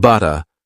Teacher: Words like butter become butta, with a gentle T sound instead of a hard D sound.